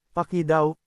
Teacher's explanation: Ang salitang paki ay may impit sa dulo mabilis bigkasin.